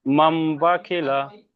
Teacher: নুন সাকিনের পরে বা আছে তাই নুন সাকিনকে মিম দ্বারা পরিবর্তন করে এক আলিফ পরিমাণ গুণ না করে পড়তে হবে বায়ের উপরে জবার · খয়ের নিচে জের আছে, জেরটা হচ্ছে হারাকাত, হারাকাতকে তাড়াতাড়ি পড়তে হবে, টান দেওয়া নিষেধ। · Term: ইকলাব